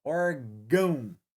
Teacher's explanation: O an aparece mais que o o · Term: ditongos decrescentes